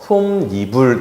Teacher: 그런데 여기서 지금 뭘 하고 싶냐면요, 앞에 것과 구분하고 싶기 때문에 니를 붙여요. 그래서 솜 더하기 니은 더하기 이불에서 솜니불 이렇게 발음합니다. 그래서 발음은 솜니불이라고 하지만 표기상으로는 원래 형태를 그대로 지켜서 솜이불이 되는 거예요. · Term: 니은 첨가